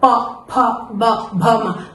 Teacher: प वाला सीरीज है उसको होठ से बोलते हैं। प फ ब भ म तो इसमें उच्चारण स्थान होठ हो जाता है।